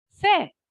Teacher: it's monosyllabic because R is silent so you're not going to pronounce that R